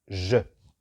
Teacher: E muda, es decir, casi sin pronunciarse mucho, solo como el apoyo de la consonante